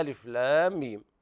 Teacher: لام هجاؤها على ثلاثة أحرف وسطها حرف مد، وجاء بعدها ساكن صحيح أصلي في الوصل والوقف، فيمد الألف ست حركات للتخلص من التقاء الساكنين. ثم يأتي بعدها ميم، وهنا الميم الأخيرة ساكنة وقبلها ياء مادية ساكنة، فاجتمع ساكنان أيضا نتخلص من التقاء الساكنين بإطالة الصوت ست حركات. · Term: مد لازم حرفي مثقل